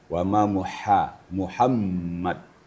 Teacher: Huruf ha kita ketahui tempat makhrajnya adalah wastul halaq, di tengah-tengah tenggorokan.